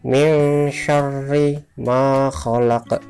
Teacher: Ro di sini di atasnya ada huruf tasydid, artinya nantinya ro ini dibaca rangkap atau double.